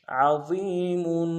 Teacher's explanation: ضا کو موٹا ادا کرتے ہوئے یا مدہ کو ایک انداز میں کھینچیں گے